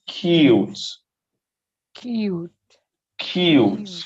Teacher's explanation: There is a palatal Y in between C and U, and in between M and U. The last E is not there, but it has influence on the U, on the vowel.